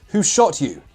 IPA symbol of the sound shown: tʃ